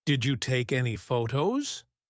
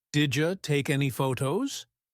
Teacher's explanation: We used connected speech, like, Did you take any photos? becomes, Did ya take any photos? when spoken fast.